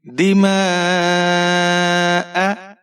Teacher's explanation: وَيَسْفِكُ الدِّمَاءَ, دال کے نیچے زیر ہے بغیر کھینچے پڑھیں گے. میم کے اوپر زبر ہے اور مد متصل ہے. 5-6 حرکات تک کھینچ کر پڑھیں گے. حمزہ کے اوپر زبر ہے بغیر کھینچے پڑھیں گے.